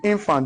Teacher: When you mention a noun of two syllables, the stress must fall on the left syllable. So the infant, the in has stress. The f must not receive stress.